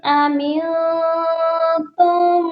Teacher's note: أَمِنْتُم، نون ساکن پر اخفا ہوگا۔ · میم ساکن اور میم مشدد اکٹھے آ گئے ہیں، تو ہم نے تا کو میم مشدد کے ساتھ ملانا ہے اور غنہ بھی کرنا ہے۔